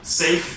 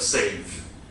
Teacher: Safe is then final devoicing. You devoice the final sound.